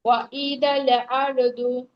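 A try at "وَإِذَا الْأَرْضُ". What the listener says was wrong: আপু জাল এরকম হয়ে যাচ্ছে আপু। ওয়া ইদাল আরদু। ওয়া ইদাল আরদু। ওয়া ইদাল আরদু।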